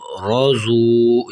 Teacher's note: آگے را زبر رو، زاد واو پیش زو، روزو، یہاں پر را کو بھی موٹا کرنا ہے اور زاد کو بھی موٹا کر کے پڑھنا ہے